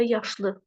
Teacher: Normalda yaşlı, vurğu düşür 2-yə